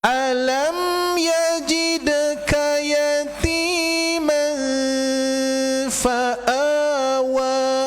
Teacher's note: ikhfa hakiki tanwin bertemu fa berarti harus didengungkan